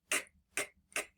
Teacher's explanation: when I feel my throat no it's not buzzing when I make ckk which means it's unvoiced